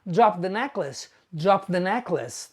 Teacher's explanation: It should be I dropped the necklace. But when you say dropped the, you link the sound. So you end up saying drop the necklace.